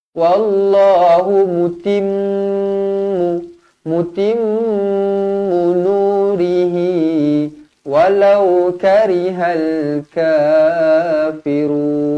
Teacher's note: Wallahu mutimmu, mim yang bertanda sabdu wajibul gunnah dengung 2 harakat.